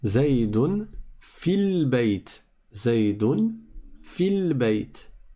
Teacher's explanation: Donc on a bien un soukoun ici, sur le lem, et un soukoun sur le ya. Comme le ya est une prolongation, c'est un harf med, c'est un med, alors on le supprime, on ne le lit pas.